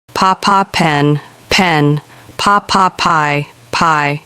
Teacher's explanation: Put your hand in front of your mouth and say pen. You will feel a puff of air. Your throat does not vibrate when you say P. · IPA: /p/